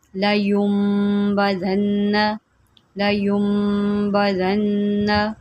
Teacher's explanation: نون کو چھپا دیا اور میم کے ساتھ جو ہے ہم نے گنہ کر دیا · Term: اقلاب